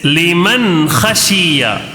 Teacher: جلد نون کو ظاہر کر کے بغیر غنہ کے جلد پڑھنا ہے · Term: اظہار